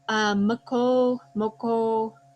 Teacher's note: we have our typical velar plosives followed by a rounded vowel